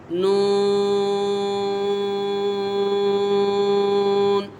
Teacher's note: نون یہ حرف طرفیہ ہے، اس کا مخرج ہے زبان کا کنارہ اور انیاب سے ثنایا تک کے دانتوں کے جڑوں سے ادا ہوتا ہے۔